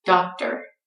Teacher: You have to be careful with OR because it often reduces, as in the word doctor, becomes just at the end.